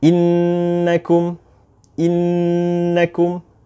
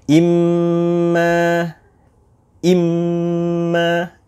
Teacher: kita menghentakkan suara mim atau nun kita yang bertasydid. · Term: hentakan